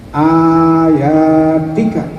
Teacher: Karena di sini ayat itu a-nya adalah mad badal, maka hafaz memberlakukannya 2 harokat saja.